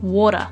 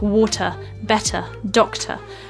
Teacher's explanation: all of the t's are enunciated and this is really really important and they all sound like an actual T sound